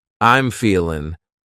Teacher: You might say, I'm feeling, cutting off that G.